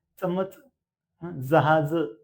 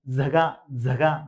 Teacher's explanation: आता बघ जहाज म्हणताना काय करतंय, टाळू आणि दाताला लागून ते हवा बाहेर पडते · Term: दंत तालावे